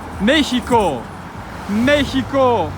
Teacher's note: mexico is stressed on the antepenult